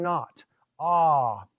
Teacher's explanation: You would expect an O, it's more of an ah sound, close to our A, or to the Greek alpha.